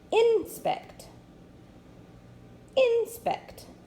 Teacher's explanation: I'm going to make sure to put the accent on the first syllable.